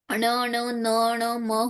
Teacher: हर वर्ग का पांचवा वर्ण होता है अनुनासिक, जिसके नाक से साउंड आती है।